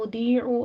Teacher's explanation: ضاد کو پور پڑھتے ہوئے یا مد ادا کرنی ہے